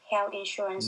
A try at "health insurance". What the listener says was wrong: no I'm still not hearing that th I'm sorry you it sounds like you're saying Hell Insurance